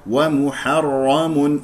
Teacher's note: الراء مفخمه لانها مفتوحه